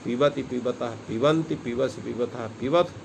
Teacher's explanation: इसलिए जो है धातु पाठ में कई जगह पर ऐसा, जहाँ पर पा और बा और वा का है वहाँ ओष्ठ्यादि दंतोष्ठ्यादि ही ऐसा जो है पाणिनि ने वहाँ पर उच्चारण किया है, उनको उच्चारण के विषय को बतलाने के लिए। तो यहाँ पी ब अर्थात यहाँ पर ओष्ठ्य उच्चारण होना है, और दंतोष्ठ उच्चारण नहीं होना है।